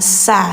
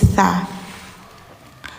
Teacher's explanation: lidah ujung tempel gigi atas